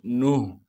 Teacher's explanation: नून हा पेश नूह। हा को साफ करके गले से अदा करेंगे, गले का वो हिस्सा जो सीने की जानिब है।